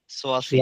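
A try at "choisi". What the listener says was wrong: সোয়া, হ্যাঁ, ফাইন।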